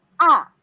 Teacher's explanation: now the fourth tone miss l from up to down